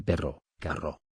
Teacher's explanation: La RR representa un sonido vibrante múltiple